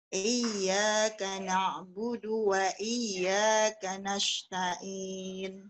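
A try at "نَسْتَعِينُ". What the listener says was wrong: Nah, pakai sin. Tadi sebelumnya Ibu pakai ya, pakai sot. Ya, lebih bulatnya ke sot ya. Antara sot dengan sya ya.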